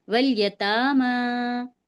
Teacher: ہم واو کو سیدھے لام سے ملائیں گے، الف کو چھوڑ دیں گے. ول یتاما اس طرح پڑھیں گے.